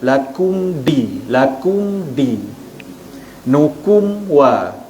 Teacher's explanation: huruf mim bertemu dengan dal, izhar syafawi, tutup mulut, terus sebut huruf dal.